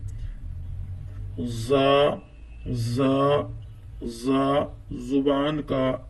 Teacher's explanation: जुबान की नोक जब सनाया सुफला यानी नीचे के दो दांतों के साथ साथ ऊपर के दो दांतों से लगे तो ये हर्फ अदा होता है